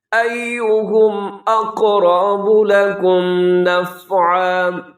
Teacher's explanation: اقرب قاف بھی موٹا، را بھی موٹا ہے، اس کے اوپر زبر ہے. لکم نفعا یہاں وقف کر دی گیا، تنوین ہے 2 زبر کی تو الف کی طرح پڑھی جائے گی.